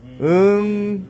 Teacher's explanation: 이응 받침을 발음할 때 보면은 혓뿌리가 마지막에 목젖을 다 막아야만 마무리가 돼. 혓뿌리가 목젖을 막아야 됩니다. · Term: 여린이천장 소리